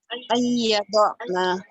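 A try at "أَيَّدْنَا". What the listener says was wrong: Nah, itu tidak diguna. Kalau gitu ayyadna itu diguna. Ingat diguna. Ayyadna. Nah, kalau idgham bigunnah berarti ditahan, harus ada gunnahnya. Ya, kalau ketemu yanmu seperti itu.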